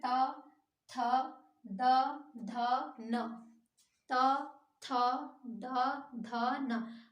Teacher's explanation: दंत जो कि दांतों से टच हो, जीभ आपकी जब दांतों से टच होती है तो वो दंत व्यंजन कहलाते हैं।